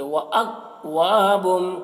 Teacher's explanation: کاف میں قلقلہ نہ ہونے پائے، یعنی وَأَكْوَابٌ ایسے نہیں بولنا ہے، بلکہ وَأَكْوَابٌ، کاف میں آواز کو روک لینا ہے۔